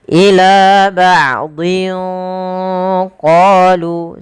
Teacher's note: Maka di lafal din ketemu dengan huruf qaf, maka dia hurufnya tanwinnya disamarkan ke huruf qaf. Ila ba'dhin qalu, sambil ditahan. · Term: ikhfa